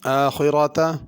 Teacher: را کو پر کرنا ہے اور خا بھی پر پڑی جائے گی